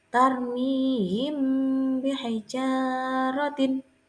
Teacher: ba contoh ayatnya tarmimijartin Saya ulangi lagi yaija car membacanya adalah suara yang samar antara mim dan ba pada bibir kemudian ditahan kira-kira dua harakat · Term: Ikhfa Syafawi